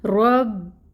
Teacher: پر پڑھیں گے، موٹا کر کے پڑھیں رو کو، رو کو با کے ساتھ ملائیں، تشدید ٹائم ٹیکنگ ہوگا اور فتحہ کی حرکت کو ہم 1 کاؤنٹ ہی پڑھیں گے۔ رب، با کی زبر کو لمبا نہیں کھینچنا، ایک حرکت پڑھنا ہے۔